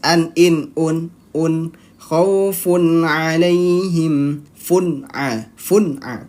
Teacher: Dibacanya kaidahnya dia jelas dan pendek. Maksudnya apa jelas? Tanwinnya atau nun sukunnya dibaca jelas. An, in, un, khaufun alaihim, fun'a, pendek. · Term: idhar halqi